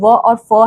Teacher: दंतोष्ठ है यानी कि दांत और ओठ एक साथ आते हैं